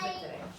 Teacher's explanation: But in mittere, it's a short E, so the stress is on the first syllable